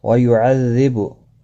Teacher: زال کے اوپر تشدید ہے، تھوڑا سختی کے ساتھ پڑھیں تاکہ تشدید ظاہر ہو